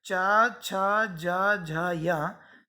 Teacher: फिर चा, छा, जा, झा, या, ये कहलाते हैं तालव्य, क्योंकि इनके बोलते समय वायु तालु को स्पर्श करते हुए निकलती है, तालव्य वर्ण।